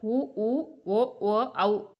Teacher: உதடுகள் குவிப்பதால் பிறக்கும் எழுத்துக்கள் உ, ஊ, ஓ, ஓ, ஔ.